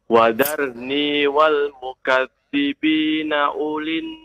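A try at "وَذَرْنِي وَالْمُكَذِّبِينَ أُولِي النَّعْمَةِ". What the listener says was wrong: U-nya tidak dipanjangkan. Ulin. Ya, tidak dipanjangkan. Tidak dipanjangkan, Pak. Tidak dipanjangkan.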